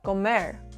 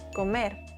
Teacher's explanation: with a soft tap like ladder